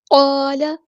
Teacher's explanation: قاف ہمارا heavy letter ہے، الف مدہ بھی یہاں پہ ہیوی ہوگا. لام کی جو زبر ہے اس کو لمبا نہیں کرنا ہم نے.